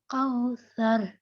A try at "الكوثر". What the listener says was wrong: round lips ہو رہے ہیں آپ کے،